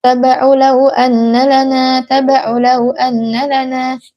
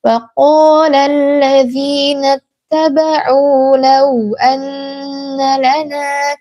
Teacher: jangan lupa adalah mad badal, panjangnya 2 harokat